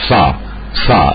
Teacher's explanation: سب سے پہلے تو آپ یہ ذہن میں رکھیے کہ سے کا تلفظ عربی میں اس طریقے سے ہوگا کہ آپ کے منہ میں جو دانت سب سے آگے کے، سب سے اگلے جو دو دانت ہیں وہاں زبان لگائیے تو وہاں سے نکلے گا